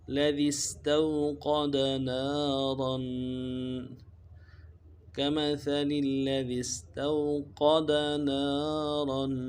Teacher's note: استوقد نارا میں تو میں واو لین ہے نہیں کھینچیں گے، قاف کو موٹا کریں گے اور نون کے بعد الف مدہ ہے اس کو کھینچیں گے ایک الف دار میں